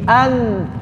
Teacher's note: ujung lidahnya nempelnya masih di ujung gigi seri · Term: lahan